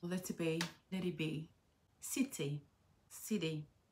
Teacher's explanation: À la différence des Britanniques, les Américains, eux, prononcent le T comme un D.